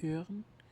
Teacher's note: It's like the I in girl, but you make your lips more rounded.